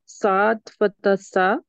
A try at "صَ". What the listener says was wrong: सॉ, little heavy, सॉ। हूँ, okay, थोड़ा heavy रहेगा